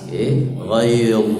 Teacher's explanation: Ghayz, tapi dia tebal, ya. Tebal itu pangkal lidah itu naik ke atas.